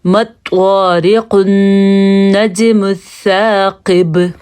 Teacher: جیم پہ ہم نے قلقلہ کیا کیونکہ یہ حروف قلقلہ میں سے ہے